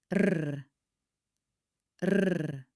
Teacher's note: flicking the roof of your mouth just behind your upper teeth